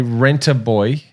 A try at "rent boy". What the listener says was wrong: Rent. There's rent. There's no A.